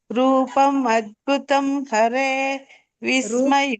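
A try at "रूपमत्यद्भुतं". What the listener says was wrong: ಮತ್ತೆ ಅದ್ಯ ಬಿಟ್ರಿ ಅಲ್ಲಿ ಅತ್ಯ ಕೇಳಿಸಲೇ ಇಲ್ಲ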